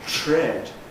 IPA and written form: tɹ̝̊ed (tread)